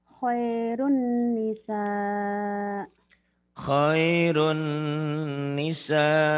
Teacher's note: Ini domah tain ketemu nun idgham bi gunnah